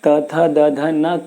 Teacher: त बोलेंगे आपकी जीभ और दांत दोनों स्पर्श किए हुए